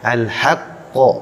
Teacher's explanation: Huruf qaf memiliki sifat isti'la, artinya tebal